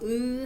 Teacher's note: 으 하면 입술이 평평해지고 평순